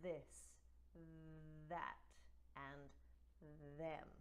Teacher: We're talking about the voiced TH, where vocalization happens.